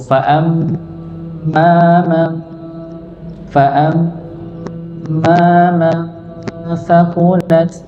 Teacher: huruf mim dia bertasydid maka didengungkan, ditahan dulu.